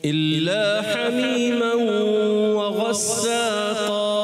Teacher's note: काफ की अदायगी पुर और यहाँ इख्फा का गुन्ना भी करेंगे